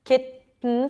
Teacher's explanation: I'm bringing the tongue up and release air through the nose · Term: nasal tea